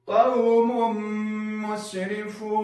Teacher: دلته به دغه تنوین چې د میم په سر باندې دوه پیښونه راغلي، دا به په میم کې داخله وو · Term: ادغام